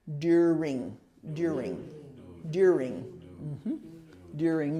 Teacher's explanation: this is the accent is on the first syllable during you just have to have the r sound in there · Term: emphasis